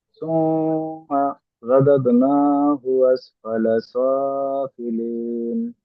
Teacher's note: তোমরা একটু বেশি গুণা করবেন, এখানে ওয়াজিব গুণা।